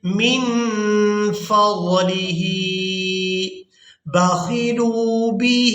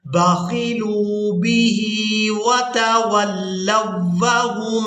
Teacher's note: ہم نے لام کو واو مدہ کے ساتھ ملاتے ہوئے کھینچ کر ادا کرنا ہے